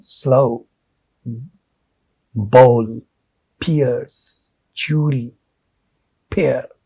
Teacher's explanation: It sounds that way when we speak it, but they are one, gliding from one to the other. The first sound in the combination is articulated longer and stronger than the second one. And in terms of length, they are like long vowels. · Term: diphthongs